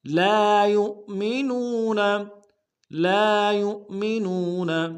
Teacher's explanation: فلا وربک لا یؤمنون، لا یؤمنون، لام الف مدہ ہے، ایک الف دال میں کھینچیں گے. یا کو حمزہ کے ساتھ ملائیں گے، حمزہ بشکل واو ہے، جھٹکا دیں گے. اور نو میں واو مدہ ہے، اس کو ایک الف دال میں کھینچیں گے.